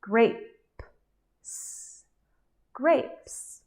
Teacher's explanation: We only go from the last sound, P, P, to the soft S sound.